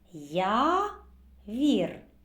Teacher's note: літера Я позначає не один а два звука звукосполучення й А в якому й приголосний завжди м'який